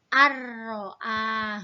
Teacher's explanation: nun mati bertemu dengan huruf ro tanpa dengung langsung masuk kepada huruf ro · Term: idgham bilagunnah